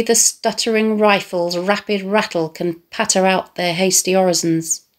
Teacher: the short ah sounds in rapid rattle can patter